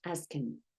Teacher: Notice how the H and TH sounds are cut off at the beginning of the object pronouns.